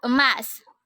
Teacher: Bunyi E dengan ciri-ciri tengah, pusat, tak bulat dengan contoh kata emas.